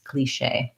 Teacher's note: with the long tense E